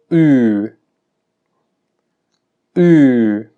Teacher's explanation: Y remarco mucho esta distinción de que no es como la U del español, porque la U del español sí se pronuncia con la lengua casi retraída. La U del inglés se pronuncia con características similares a la U del español, pero con la lengua más hacia el frente, cercana al centro de la boca.